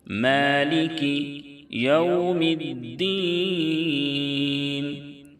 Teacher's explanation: لام اور کاف کے نیچے چونکہ زیر ہے اس لیے اس کو معروف پڑھیں گے، مالکے نہیں پڑھیں گے